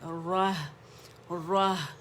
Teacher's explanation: را موٹا، ہا باریک ہے